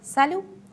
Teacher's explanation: T at the end is not pronounced.